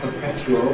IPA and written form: pəˈpetjuəl (perpetual)